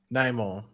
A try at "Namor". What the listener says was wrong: No. Don't say the new version. Roll the R.